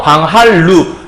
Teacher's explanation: 니은이 리을의 앞에 있든 뒤에 있든 리을로 변하게 되면 유음화라고 하는구나